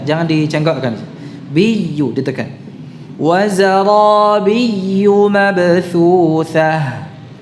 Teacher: wazarabiyu biyu itu ditekan ya-nya, jangan dipanjangkan bi-nya. Wazarabiyu biyu, nah jangan dicengkokkan, biyu ditekan.